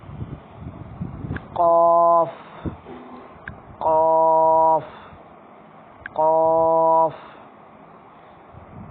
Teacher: قاف بالکل زبان کے اندر جو کوا سا ہوتا ہے وہ منہ کھولے تو لٹکا ہوتا ہے، ادھر سے زبان اوپر لگے گی تعلق ہو تو اس قاف کی آواز آئے گی.